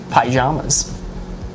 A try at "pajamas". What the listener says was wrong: So I know that you eat a lot of pie when you wear those, but that doesn't mean that's how they're pronounced. I'll be pie jamming all day long.